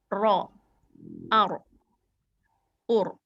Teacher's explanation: kalau ro tebal, kita kan ngelihat tuh ya di pangkal lidah tuh yang deket tenggorokan, deket kerongkongan, dia naik kalau ro-nya tebal.